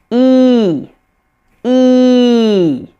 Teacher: You very clearly see a big smile. You see a lot of tension in my face and it sounds higher pitched. It's a longer sound.